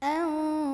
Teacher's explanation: Mad tabi'inya alif, sebelumnya fathah, huruf yang disukunkannya adalah huruf ra. Maka dibaca panjang sodnya boleh 2, boleh 4, boleh 6 harokat. · Ada ikhfa ausat karena ada nun sukun ketemu sama huruf shad, maka bunyi nun sukunnya samar-samar menuju huruf shad sambil dengung. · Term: mad arid li sukun